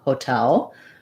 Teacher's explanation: i do say o for the ho syllable hotel with a clear vowel but it's going to be short and my length is going to be on the tail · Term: true T